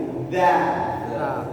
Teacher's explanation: ujung lidah ketemu dengan ujung gigi